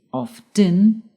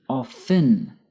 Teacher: Often can be pronounced two ways. By pronouncing the t often or by not pronouncing the t often. Both forms are correct and depend on where you live.